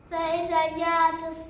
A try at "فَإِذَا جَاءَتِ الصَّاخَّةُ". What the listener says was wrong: ما مديت. مد شوية. ما مديت. كمان مرة. لا ابني مدي دي ودي.